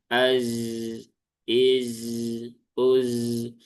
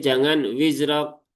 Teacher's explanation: Dia tidak punya sifat qalqalah ya. Dia adanya sifat rokhawah. Maka pastikan tertunaikan rokhawahnya dialirkan dulu.